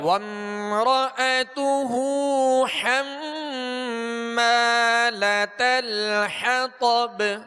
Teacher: میم نون جب بھی مشدد ہوں، جب ان پر شد آ جائے، شد تشدید جو کہتے ہیں 3 دندان والی شکل کو کہتے ہیں، تو حم اس کے اوپر شد ہے، اس میں غنہ کریں گے. اور حمالۃ الحطب، طا کو پر پڑھیں گے اور آگے با پر قلقلہ کریں گے، یعنی آواز میں جنبش ہوگی.